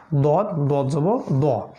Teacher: জিহ্বার পার্শ্বভাগ সাইডে দাঁতে লাগবে